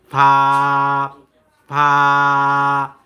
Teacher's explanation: নিচে ঠোঁটের পেট সামনে দুই দাঁতের আগার সাথে লাগাইয়া উচ্চারিত হয় ফা